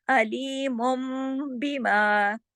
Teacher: अगर बा आ रहा है तो फिर आपने उसको नून की आवाज़ को मीम में बदल देना है। जैसे यहाँ हमने बदला अलीमुम बिमा, और इस बदलने का कायदे का नाम है इक़लाब।